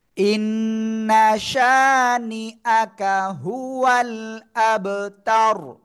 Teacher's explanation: অক্ফ করলে কি র সাকিন, তখন র সাকিন তার ডাইনে জবর মোটা আওয়াজে পড়তে হবে